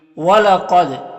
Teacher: قاف یہاں پر حروف مستعلیہ میں سے ہے تو اسے پر پڑھیں گے۔ دال حروف قلقلہ میں سے ہے اور دال کے اوپر جزم ہے تو دال میں قلقلہ ہوگا، یعنی دال کو ادا کرتے وقت اس کی آواز اپنے مخرج سے ٹکر کھا کر الگ ہو جائے گی۔